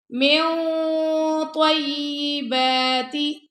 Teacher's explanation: طا heavy letter ہے اس لیے heavy اخفا ہو رہا ہے، ساری آواز نوز میں جا رہی ہے. من طیباتی، تا کو چھوٹا پڑھنا ہے، فوراً میم کی طرف آ جائے، ٹھیک ہے.